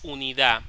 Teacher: no pronunciamos la última d